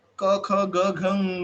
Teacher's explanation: जब भी हम लोग उच्चारण स्थान बताते हैं क ख ग घ ङ, तो उसको बोलते कंठ्य है